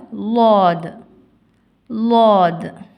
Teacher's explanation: லாத் நாவின் ஓரம் மேல் கடுவாய் பற்களின் வேரை தொடும் பொழுது ஒலிக்க பெறுகின்றது